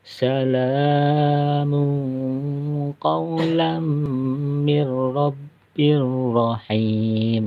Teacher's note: nunnya tidak terbaca langsung masuk dalam huruf ra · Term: idgham bilaguna